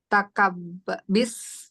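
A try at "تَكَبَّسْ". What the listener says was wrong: Nggak ada kasroh. Kalau awalnya tak nggak ada kasroh. Oke, takabbas.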